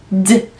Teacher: 혀끝 윗니 뒤에 쭉 밀면서 D 공기 차주시고 D 이때 성대 울림 강해서 올라오는 소리가 자기 귀에는 들려야 해요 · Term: D 사운드